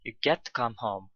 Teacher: get and home are stressed